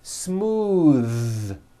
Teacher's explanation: They say smooth with an unvoiced th, but it's voiced.